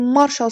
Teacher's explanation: marşal sözündə vurğu mara düşür. Yəni birinci hecəyə.